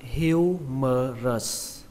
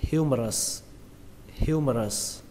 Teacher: Từ vựng này các bạn đọc là humerus. Trọng âm của từ này rơi vào âm đầu tiên, âm hiu